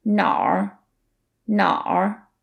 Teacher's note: has two characters but the pinging is one syllable that's because it's technically na plus r and then we merge it into Nar that is a very common feature of the Beijing dialect